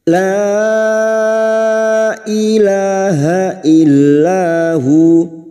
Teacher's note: kecil namanya wqaf Jaiz artinya boleh berhenti boleh terusbukum u la bertemunya Mad dengan Hamzah di lain kalimat Mad Jaiz munfasil lima harakat kita panjangkan